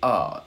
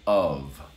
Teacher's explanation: if i go quickly i say uh if i slow down i say of